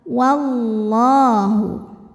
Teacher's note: karena didahului harakat fathah maka lamnya tebal wallahu kemudian Alif lamnya dinamakan dengan alif lam syamsiyah karena alif lam menghadapi huruf Syamsiyah yaitu lam maka alif lam tidak kita baca · Wallah, lam jalalah dibunyikan secara tafkhim karena didahului harokat fathah, maka lamnya tebal. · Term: Idgham Syamsi